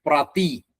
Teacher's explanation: പ്രതി എന്നുള്ള തകാരം അത് ഖരമാണ്, പ്രതി. പിന്നെ ബോധി എന്ന് വരുമ്പോൾ അവിടെ ധി എന്നുള്ളത് ഘോഷാക്ഷരാണ്.